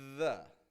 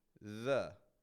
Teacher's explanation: between the teeth and we're just not just blowing air we're actually adding voice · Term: voice th